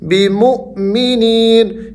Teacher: وما هم بمؤمنین، بمؤمنین، یہاں واو حمزہ ساکن ہے، تو ہم نے یہ پڑھا تھا جب حمزہ ساکن ہوگا تو ہم نے اس کو جھٹکے سے پڑھنا ہے۔ بمؤمنین، یا حروف مدہ میں سے ہے تو آپ نے یہاں پر نی کی آواز کو تھوڑا سا کھینچنا ہے۔